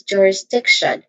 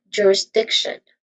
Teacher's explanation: All in all, this is jurisdiction, where this primary stress is on the third syllable